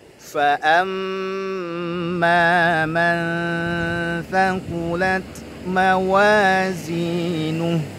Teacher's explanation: Fa amma man thaqulat mawazinuh ya, fa-nya tipis, ada nafas yang mengalir. Fa amma jelas hamzahnya, jangan fa amma menyeret huruf, tak boleh.